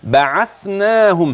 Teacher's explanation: الثاء فلا تحول إلى سين